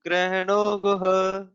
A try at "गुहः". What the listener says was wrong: गुहः again visarga is there. You can practice that.